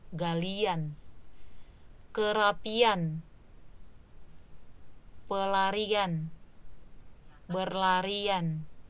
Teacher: Jadi ketika kita melafalkan atau menyebutkan kata itu ada luncuran Y, seperti ada huruf Y.